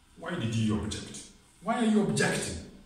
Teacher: you objecting to my proposal then it's a verb the shift the stress shifts on the next syllable